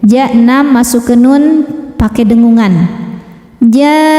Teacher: Mad tabi'inya alif didahului fathah, huruf bertasydidnya nun. Maka cara bacanya huruf jim wajib dibaca panjang 6 harokat. Kemudian masukkan ke nun sambil didengungkan, ditahan ya. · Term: mad lazim kilmi musaqqal